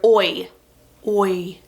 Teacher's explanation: It kind of starts at the front and then kind of opens up to like an E sound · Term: diphthong